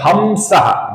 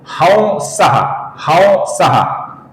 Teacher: आगे जो शब्द है हंसहा, इसका कुछ लोग उच्चारण करते हैं हमसहा, जो गलत उच्चारण है दोस्तों। इसका सही उच्चारण है ह और अनुस्वार की जगह पर हल्का सा व